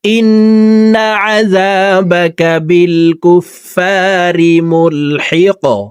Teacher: কফ কলকলার হরফ উপরের দিকে ধাবিত করে ধাক্কা দিয়ে কফকে সাকিন করব